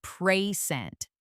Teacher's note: With the stress clearly on the second part, it becomes a verb